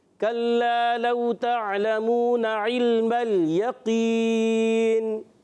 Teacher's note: काफ को बारीक नहीं करेंगे बल्कि पुर रखेंगे, काफ को पुर करके अदा करना है। किसी की आवाज़ थोड़ी बारीक आई थी तो बारीक नहीं होना, काफ पुर रहेगा।